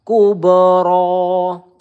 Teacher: kub ini qalqalah ya. Kita berikan pantulan kubro. Ro satu ayunan atau dua harakat.